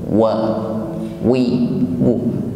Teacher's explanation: Baik, diawali dengan huruf waw, makhrajnya di bibir, ya. Jadi sebelum wa terucapkan maka bibir sudah dipastikan dihimpun ke depan, ya, mencucu.